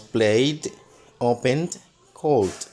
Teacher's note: en estos otros verbos que como Play Open y call suena como si fuera una d